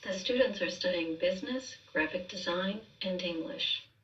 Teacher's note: with business, we're still on a rise here because again, that's telling us we're not done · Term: listing